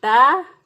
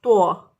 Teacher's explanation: تا کو باریک پڑھیں گے، تو کو موٹا پڑھتے ہیں. تا تو، اگر تو پڑھیں گے اس کو تو غلط ہو جائے گا، تا پڑھیں گے اس کو تو ٹھیک ہے.